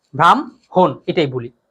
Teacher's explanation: অর্থাৎ যেমন ব্রাহ্মণ, আগে হ পরে না ম না, কিন্তু উচ্চারণ হবে আগে ম পরে হ